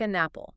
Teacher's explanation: The n sound just attaches to the a of apple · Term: linking